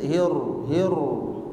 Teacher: Ro ini ada takrir namanya, yaitu getaran, tapi tidak berlebihan juga, sedikit hir.